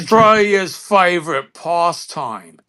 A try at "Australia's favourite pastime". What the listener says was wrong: No, you put too much pommy in there. You were almost there until you said the past.